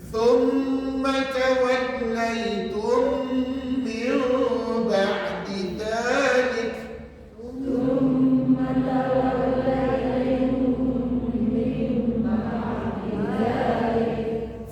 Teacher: idgham syafawi sahaja, iaitu mim mati jumpa dengan mim bersatu.